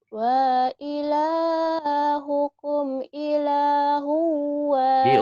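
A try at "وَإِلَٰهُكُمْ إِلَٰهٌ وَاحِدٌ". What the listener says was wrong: Diulang. Wa. Bukan la. Wa. Wa ilahukum ilahu wahid.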